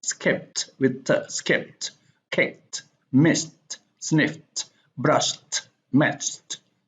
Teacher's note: k, s, f, and sh and ch are voiceless, and we pronounce it as t.